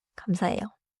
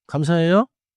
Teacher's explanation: The pitch gently falls. It sounds finished. · That sounds like a question or a surprised echo, not the normal finished thank you. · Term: rising ending